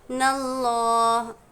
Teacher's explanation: तो लफ्ज़ अल्लाह के लाम को पूर पढ़ना है। जैसे हम ऊपर देखें कि अल्लाह के लाम से पहले ज़ेर था तो हमने इसको बारीक यानी पतली आवाज़ निकाले।